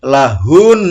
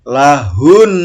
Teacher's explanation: Jadi kalau ini dihentikan, lahunna, dibaca berhenti menjadi lahun. Nah, jadi suara hunnya itu ditekan dan ditahan 2 harokat